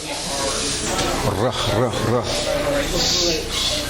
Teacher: And this has the R sound. And you have to actually roll this Resh